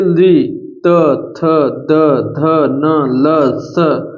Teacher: इन सब जो वर्णों को बोलने पर जीवा हमारे दंत को अर्थात दांत को स्पर्श कर रही है